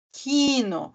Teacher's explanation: esse I ele é puxadinha assim né parece que tem mais do que um I ali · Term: de forma longa